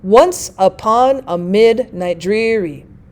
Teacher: so we have these stressed syllables starting it off instead of unstressed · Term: trochaic